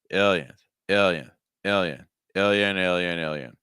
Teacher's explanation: with airflow notice that the ill syllable is the higher pitch the Yen syllable is a lower pitch and faster · notice that the ill syllable is the higher pitch the Yen syllable is a lower pitch and faster aliens alien